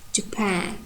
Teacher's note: So the first syllable is unstressed, and pan is stressed with primary stress.